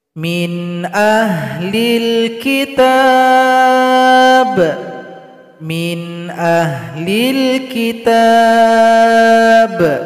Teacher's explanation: Perhatikan contoh di sini ada nun sukun jumpa dengan hamzah. Hamzah termasuk huruf delapan yang tidak boleh berdengung.